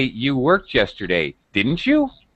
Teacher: And my pitch falls very low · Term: falling intonation